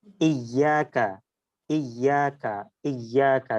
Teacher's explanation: থেকে একটু নরম ইয়া উচ্চারিত হবে জি যেমন ইয়াকা ইয়াকা ইয়াকা জিভার মাঝখান দেখেন উপরের তালুর সাথে লাগছে · জিহ্বার মাঝখান দেখেন উপরের তালুর সাথে লাগছে।